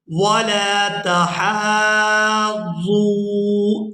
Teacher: یہاں ہم ہا کو کھینچتے ہوئے، سانس توڑے بغیر اس کو کھینچیں گے، کھینچتے ہوئے ضاد کے ساتھ ملائیں گے۔